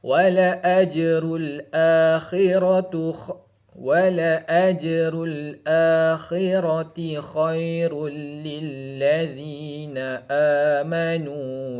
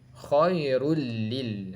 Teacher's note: Tanwin bertemu dengan huruf lam, hukum dia adalah idgham bila gunnah